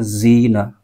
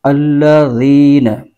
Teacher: ذال جو ہے اس کا مخرج زبان کا سرا اوپر کے دانتوں کے اندرونی کنارے سے ادا کرنا ہے نرمی کے ساتھ